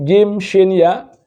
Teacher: Keluarnya dari tengah-tengah lisan. Huruf jim, shin, dan ya keluar dari tengah lisan.